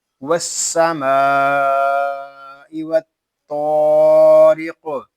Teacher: یہاں وقف میں قاف کو ساکن کریں گے اور پھر اس میں قلقلہ خوب ظاہر ہوگا